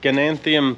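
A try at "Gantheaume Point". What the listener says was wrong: You're adding too many syllables. Ganthium?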